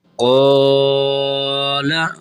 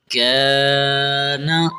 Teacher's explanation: یہ کاف باریک کر کے پڑھنا ہے، یہ قوف موٹا ہے اور اس کاف کو باریک کرنا ہے۔